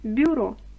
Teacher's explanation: ми чітко чуємо м'який бь пом'якшений бюро